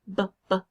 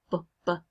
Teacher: articulation it might come from your lips like in Bubba or the most important piece of that place of articulation was where your lips came together